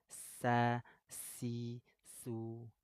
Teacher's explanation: sifatnya asofir saofir itu apa mengeluarkan suara tambahan desis sa si su asah tapi kalau syin menyebar angin Asya Asya · Sofir itu apa? Mengeluarkan suara tambahan desis. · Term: as-sofir